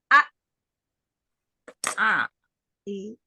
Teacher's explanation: suaranya yaitu dengan menutup rapat dua pita suara a a jadi pada saat pengucapan Hamzah sukun di situlah terjadi penutupan dengan rapat dua Pit suara pada saat pengucapan huruf hamzah yang diberi tanda sukun ee berhentinya